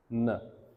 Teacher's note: Tip of tongue touches alveolar ridge.